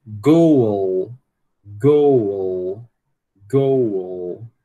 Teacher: Está conseguindo escutar um chuazinho aqui entre esse U e esse L? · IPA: goul